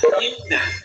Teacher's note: Penyebutannya suara lari ke hidung, bukan melalui mulut, tapi suara lari ke hidung. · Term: al-khaysyum